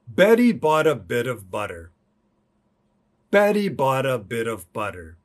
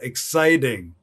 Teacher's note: americans pronounce their flap tea this relaxed tea in english and this t is like a r sound to get your tongue position we like to think of it as a d sound